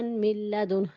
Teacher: نون ساکن کے بعد لام مشدد آ گیا، ادغام بلا غنہ